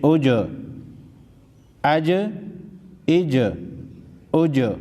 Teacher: جیم حروف قلقلہ میں سے ہے، ہلا کر پڑھیں گے